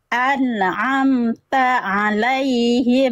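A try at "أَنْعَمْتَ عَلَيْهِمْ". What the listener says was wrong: Masih sedikit ada memantul. An'amta alaihim.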